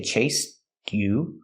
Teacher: You can make a stop T and say chased you. Or you can link the sounds and say chased you with a ch sound.